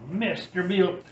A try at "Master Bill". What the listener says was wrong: Mr. Bill, well, it's not Mr. Bill, it's Master. Master Bill. It did. A little bit.